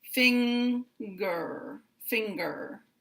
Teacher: in a word like finger, we hear two sounds. We hear the N and we hear the G. Finger, finger.